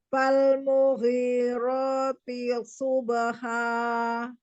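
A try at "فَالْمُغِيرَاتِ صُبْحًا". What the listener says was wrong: Iya, masih ada jeda sedikit. Fal mughirati subha. Ditebalkan lagi aja huruf sodnya. Karena sod punya sifat isti'la itbaq ya.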